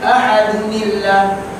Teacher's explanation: Maknanya mesti keluar balik nun kecil dia, sebab tanwin tidak boleh masuk dengan alif lam ta'rif, tanwin tak boleh masuk dengan hamzah wasal. Bila dia nak masuk juga, dia mesti jadi nun kecil.